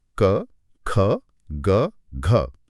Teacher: इन ध्वनियों का सीधा संबंध गले या कंठ से होता है। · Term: कंठ ध्वनियां